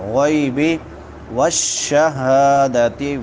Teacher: ہا بڑی ہا حلق کے آخری حصے سے جو سینے کے ساتھ ملا ہوا ہے